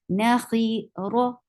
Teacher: Ra is heavy over here because whenever ra is with fatha or dhamma, ra is heavy. The heavy ra sounds like raw material.